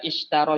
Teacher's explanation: shinnya ini udara harus keluar dengan menyebar. Keluarnya dengan menyebar. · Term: tafasyi